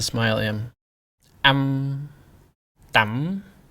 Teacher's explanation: you Really go straight to the consonant sound. Focus on making the M sound. Skip over the a sound as much as possible.